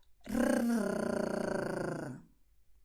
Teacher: El secreto es expulsar el aire. Y cuando expulsas el aire, tu lengua tiene que vibrar, tiene que temblar.